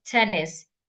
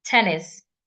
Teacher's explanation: Tennis has two syllables, excuse me, and it's a noun. So I should stress the first syllable